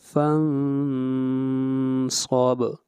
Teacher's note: فن کے اوپر اخفا ہوگا، صاد کو موٹا پڑھا جائے گا اور با کے اوپر قلقلہ ہوگا